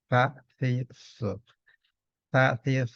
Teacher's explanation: huruf sa itu tempat keluar hurufnya ujung lidah bertemu ujung gigi atas